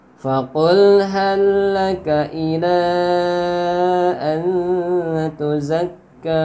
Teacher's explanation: lam mati bertemu lam harokat, jadi lamnya diidghamkan ke lam yang berharokat. Hal ya, dianggap tidak ada lamnya, itu hukumnya sama makhraj dan sifat, hukum idgham mutamatsilain.